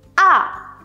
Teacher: độ cao của âm thanh nó đi từ cao xuống thấp một cách rất là gấp gáp và đột ngột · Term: thanh 4